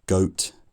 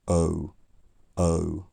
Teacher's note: rounding my lips more as the bowel goes on uh and I'm also moving my tongue from a central position to a high back position